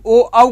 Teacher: ओ औ का उच्चारण स्थान बच्चे कंठ ओष्ठ